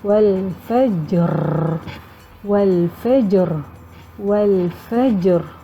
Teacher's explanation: Huruf yang terakhir itu huruf ra. Bagaimana sifat huruf ra? Dia bergetar. Jadi kita masukkan pada sifat ra.